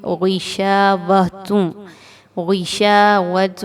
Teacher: میم ساکن کے بعد غین آ رہی ہے، اگین یہ حروف اظہار میں سے، اظہار شفوی میں سے ہے، یہاں پر ظاہر کر کے اس کو پڑھا جائے گا۔ غین کیونکہ حروف مستعلیہ میں سے ہے، اس کو موٹا کر کے پڑھیں گے۔